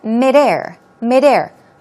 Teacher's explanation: Stress goes on the second syllable.